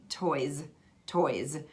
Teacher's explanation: many times that S has turned into a Z